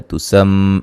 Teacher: میم مشدد پہ غنہ ضروری ہے، مد اصلی ہے.